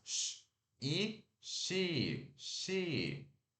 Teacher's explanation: o som da vogal I, que a gente sorri e segura um pouquinho, né? I, é o I de igreja.